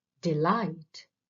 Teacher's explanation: in that word it consists of two syllables D and Light the first one is unstressed and the second light is stressed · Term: iambic